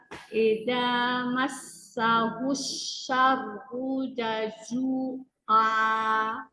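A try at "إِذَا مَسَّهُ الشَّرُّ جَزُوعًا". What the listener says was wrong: Masih panjang. Syarru jazua. Asyarru jazua.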